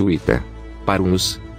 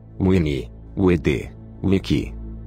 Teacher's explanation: O semiconsonante V era pronunciada como W em inglês.